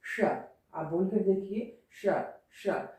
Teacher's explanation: तालव्य यानी जब आपकी जिह्वा तालु को छूती है, जब आपकी जिह्वा तालु यानी ऊपर वाले भाग को छूती है तो उसी को हम तालव्य कहते हैं